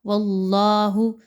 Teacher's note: واللہ مخرج ما کنتم تکتمون، اللہ کے حرف سے پہلے والے حرف کے اوپر زبر ہے، واو کے اوپر، اس لیے اس حرف جلالہ اللہ کے حرف کو پر پڑھا جائے گا۔ واللہ، زبان کو تھوڑا اوپر کی طرف اٹھائیں گے تو آپ کی یہ ادائیگی اچھے سے ہوگی۔